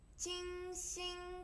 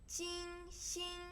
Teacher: 金 星 both flat tone